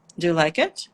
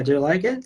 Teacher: so you will go down and up